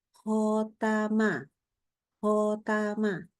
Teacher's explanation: Membaca khotama tapi kita bibirnya tuh kayak membulat tuh enggak sampai dah ya tapi lebih kayak bunyi huruf o jadi khotama khotama itu bahkan enggak ditebalkan ya Jadi tidak ada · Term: memonyongkan bibir